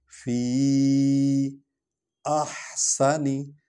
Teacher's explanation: فی فا جو ہے حرف شفوی ہے، اس کو ہونٹوں سے ادا کریں گے. فی احسنی یہ جو ہا ہے یہ ہلکی خا پڑھی جائے گی